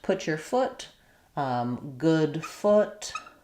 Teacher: I do still have some lip rounding, but my tongue is lower